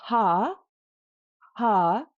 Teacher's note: if you say ha, ha, there's no click. There's a bit of roughness on the H.